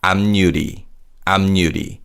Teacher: in 앞유리, 피읍 받침 changes to a 미음 sound, and 니은 is added to 유